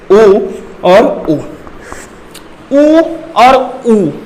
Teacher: मतलब आप जब उ बोलते हैं, मैंने बताया था कि वृत्ताकार बन जाते हैं, उ और उ वृत्ताकार होते हैं। मतलब हमारा होठ गोल हो जाता है